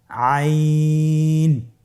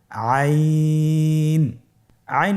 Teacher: আইন হরফটি উচ্চারণের সময় অবশ্যই তিন আলিফ টেনে পড়তে হবে। এখন আইন হরফটি বারিক হরফ। পাতলা করে পড়তে হবে।